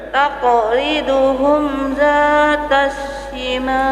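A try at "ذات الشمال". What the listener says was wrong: Kurang tebal. Dzatas shimal.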